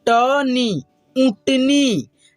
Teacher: इसी को हम लोग चंद्र बिंदु की मात्रा या अनुनासिक की भी मात्रा बोलते हैं, ठीक है। और इसका उच्चारण हम लोग करते हैं नाक के रूप में, मुंह और नाक के दोनों के मेल से इसका उच्चारण हो पाता है